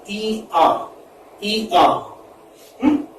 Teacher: it's a glide from centrally front unrounded vowel, which is between close and half close, to central unrounded vowel between half close and half open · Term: diphthong